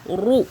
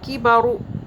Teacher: را کے اوپر پیش موٹا کریں گے اور رو کریں گے، باریک رو نہیں کریں گے، رو، ہلکی سی وائبریشن، کی بارو.